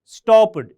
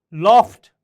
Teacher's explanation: Rule number 5 is the ed is pronounced t after the following voiceless consonants.